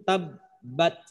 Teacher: Tabbat ba memiliki sifat syiddah, pasti tertahan suaranya.